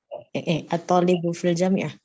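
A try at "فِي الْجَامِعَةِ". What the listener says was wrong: Fil jami'ati. Coba kasihkan harakatnya. Fil jami'ati.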